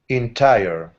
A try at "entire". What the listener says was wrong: Good, nice R sound. Good R sound.